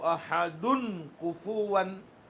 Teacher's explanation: کاف آیا، حروف حلقی میں سے ہے نہیں ہے، اس لیے گننا ہوگا، یہاں پر گننا ہوگا، حروف حلقی میں سے نہیں ہے۔